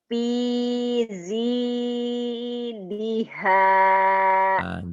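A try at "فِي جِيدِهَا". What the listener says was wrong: Jimnya keras belum keras ya. Fiji. Fiji diha. Hutang jim tuh ya. lidahnya dilipat pialzi. Jangan dilipat. Fiji. Ji. Jakarta. Jaja. Jiji. Juju. Fiji.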